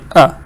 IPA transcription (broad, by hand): ə